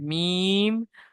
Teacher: বাইরে যে শুকন অংশ আছে দুই ঠোটের শুকন অংশ আছে সেটা দিয়ে উচ্চারিত হয় মিম